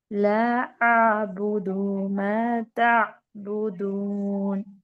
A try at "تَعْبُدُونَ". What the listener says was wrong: نہیں اس کو لمبا رکھنا ہے. تعبدون. آپ جیسے پڑھ رہی ہے نا ویسے چاہیے, جیسے اس کے آگے آواز نہیں جاتی. میں فیل میں پڑھا, یہاں آئین میں کنٹینیو ہونا چاہیے. تعبدون.